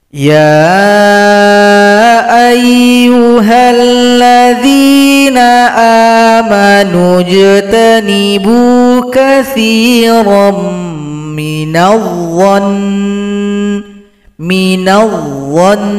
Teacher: Kalau berhenti di sini nun yang tasdid disukunkan. Kemudian kita dengungkan dua harakat atau dua kitukan.